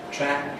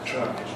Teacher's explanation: in most kinds of English, /æ/ is fronter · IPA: [træk]